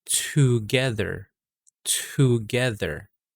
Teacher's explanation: so now exhale to give that h sound after the t sound